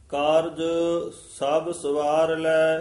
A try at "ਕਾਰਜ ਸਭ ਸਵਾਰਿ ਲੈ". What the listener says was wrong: ਕਾਰਜ ਸਭ ਸਵਾਰ ਲੈ। ਸਭ ਪਦ ਤੇ ਠਮਕ ਲੱਗੀ।